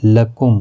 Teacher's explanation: لکم میم ساکن کے بعد لام آیا ہے، اظہار شفوی ہوگا، گنہ نہیں کریں گے